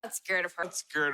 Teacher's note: the word in the present form is scare so it ends in an R sound which is a voiced consonant so we would have to use rule number two here scared